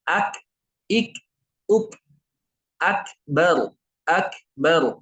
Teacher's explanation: Bunyinya keluar dari pangkal lidah. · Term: kaf